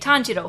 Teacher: Whenever you see an O and a U together, that is just to signify that in the Japanese writing, they are telling people that you need to make sure you don't drop this vowel and that you stretch it out, that the length of saying the vowel is longer than if it was just an O standalone